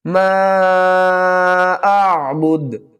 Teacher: وقف کی صورت میں با کو ساکن پڑھیں گے اور با کے اوپر قلقلہ بھی کریں گے